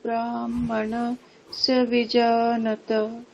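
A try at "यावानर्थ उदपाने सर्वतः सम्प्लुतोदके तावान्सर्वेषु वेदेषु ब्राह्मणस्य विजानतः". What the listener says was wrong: বিজানতঃ বিসর্গ বলতে হবে, বিজানতঃ।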